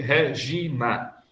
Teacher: O Na, grau 0, o Gi, grau 3 e o Ré, grau 1.